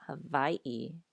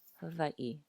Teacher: if you do use more of a V sound, it is a softer V than in English. So not Hawaii, but Hawaiʻi.